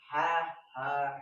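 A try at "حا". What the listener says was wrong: হা একটু শক্ত করবে যেন দুইটার মধ্যে পার্থক্য বোঝা যায়, আমরা বুঝাইতে পারি, তাহলেই হইল।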